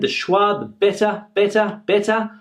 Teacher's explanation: when we say this word very quickly, better better, we can hear that it is the uh uh schwa sound at the end